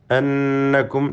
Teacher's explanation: അന്നക്കും നൂൻ മുഷദ്ദദ മണിച്ചുകൊണ്ട് ഉച്ചരിക്കണം.